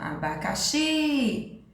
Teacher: Qual é a sílaba tônica mais forte? O xi, certo?